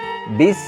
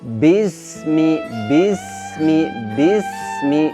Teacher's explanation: kita bisa merasakan ada aliran nafas, kemudian suara juga tidak tertahan, artinya dia lepas, kemudian ada suara mendesisnya. Jadi jangan sampai kita baca begini, bis, seperti suaranya putus. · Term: sin